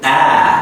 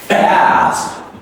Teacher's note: A here is a stretched one, okay? You open your mouth more and more